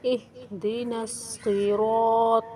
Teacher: طا پر حروف ہے، صاد بھی پر حروف ہے، را بھی پر حروف ہے، ان کو موٹا کر کے پڑھیں گے